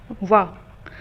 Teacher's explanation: वाह बोलते हुए हमारे 2 उच्चारण स्थान प्रयोग में होते हैं, दंत और ओष्ठ। ओके, तो दंत और ओष्ठ से वर्ण बोले जाते हैं उनको कहते हैं दंतोष्ठ, दंतोष्ठ।